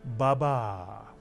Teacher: in Hebrew, words tend to be accented on the last syllable, so this nonsense word would be pronounced baba